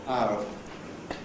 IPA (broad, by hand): aʊ